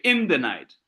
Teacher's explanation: You don't insist. You don't insist on the, but you still insist on night. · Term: anapestic